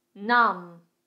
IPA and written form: nʌm (Numb)